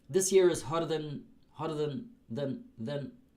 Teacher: I don't really pronounce the vowel